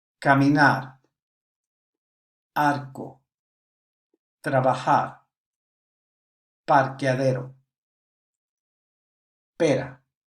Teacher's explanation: R in the middle of a word or at the end is pronounced very softly, sometimes barely heard.